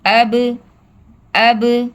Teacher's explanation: حمزہ با زبر اب اس کی آواز کو ہم روکیں گے نہیں، یہاں پر ہم نے قلقلہ کرنا ہے. اس کی آواز پلٹ کر واپس آئے گی. اب اب، حمزہ با زیر اب، حمزہ با پیش اب، اب اب اب، اب اب اب.